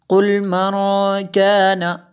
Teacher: نون ساکن ہے اس کے بعد کاف حروف اخفا میں سے ہے، یہاں پہ اخفا ہوگا